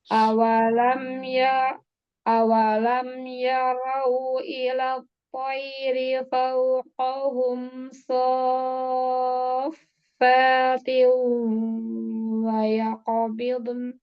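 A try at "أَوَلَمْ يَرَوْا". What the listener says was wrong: Wawunya monyongkan lagi.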